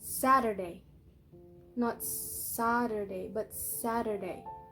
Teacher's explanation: So the syllable sat is stressed.